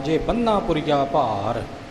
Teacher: ਬੰਨਾ ਥੋੜਾ ਕੱਸ ਕੇ ਹੋਵੇਗਾ, ਥੋੜੇ ਜਿਹੇ ਹਾਹੇ ਦਾ ਉਚਾਰਨ